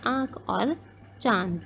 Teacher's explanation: इसका उच्चारण मुख प्लस नासिका से होता है, ये भी मैंने आपको पहले ही बता दिया कि जब हम इसे प्रोनाउंस करते हैं, इसका उच्चारण करते हैं, तो हमारी दोनों से ही आवाज़ निकलती है, मुँह से भी और नाक से भी। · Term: अनुनासिक